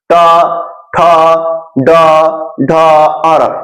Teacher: ट ठ ड ढ अर, ये मूर्धा से बोल रहा है